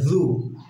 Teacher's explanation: যায় জিমের মতো উচ্চারণ না হয়ে যায় এই বিষয়টা খেয়াল রাখবো জু জিহ্বার আগা সামনের উপরে 2 দাঁতের আগার সঙ্গে লাগিয়ে বলতে হবে